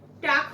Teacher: জিভের সামনের অংশ উপরে গিয়ে শক্ত তালুর স্পর্শ করে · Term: তালব্য অন্তমূলীয়